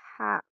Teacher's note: ہا کو ہم حلق کے درمیانی حصے سے ادا کرتے ہیں